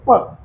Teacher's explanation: एक दबाव लग रहा है आपके होठों पे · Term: ओष्ठ्य